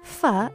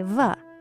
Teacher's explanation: I mean, you make fa and va by putting your bottom lip against your top teeth. The only difference is that your throat vibrates when you say va.